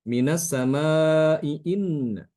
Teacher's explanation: maka Imam albazi ada membaca Hamzah pertama itu dengan cara ditashilkan